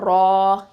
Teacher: ரா ஃபத்ஹா அலிஃப் மத்து ரா, இது வந்து தஃஹீமாக ஓதணும்